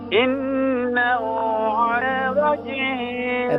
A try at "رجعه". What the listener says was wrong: راج نہیں ہے، را کو فل میں اتریں، راجعیہ، راجعیہ،